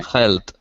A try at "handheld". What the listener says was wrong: There is a D there. Handheld.